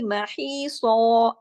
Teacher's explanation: ہا جو ہے گلے سے پڑھا جائے گا، اور سو، محیصا، سو جو ہے موٹا پڑھا جائے گا، سین کی طرح سیٹی والی آواز نہیں ہوگی